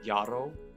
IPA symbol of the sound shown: j